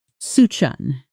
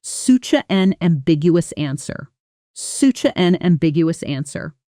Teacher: Notice how such an almost blends into one sound. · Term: connected sound